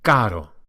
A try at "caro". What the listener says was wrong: No need to roll the R's, it's a single one. If it were double R, it would be carro,